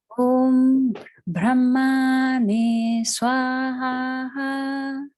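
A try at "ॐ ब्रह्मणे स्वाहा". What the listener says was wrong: Much better. Now add one more thing and get that ha. Brahmane. You hear that from the diaphragm. So you got Brahmane Swaha.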